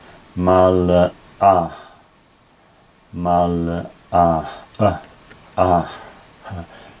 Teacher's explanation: putting a little a little breathing for the h on the end